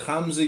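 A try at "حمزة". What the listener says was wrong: We have to teach you how to say the ha correctly.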